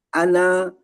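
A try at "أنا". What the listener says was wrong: apakah berkeyakinan ya nun di situ panjang sehingga Bapak bacanya ana? Apakah memang keyakinannya nunnya itu panjang, Pak?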